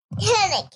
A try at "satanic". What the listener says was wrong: That's just tanic. I don't think that's a word, tanic. Satanic.